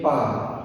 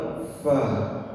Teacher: Jadi cukup sentuhkan ujung gigi atas dengan bibir bawah. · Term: huruf fa